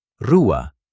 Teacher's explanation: At the beginning of a word, or double R, it sounds like a soft throat h.